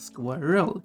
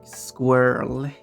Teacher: a word like squirrel which would be two syllables squirrel but in United States it typically pronounced more like squirrel one syllable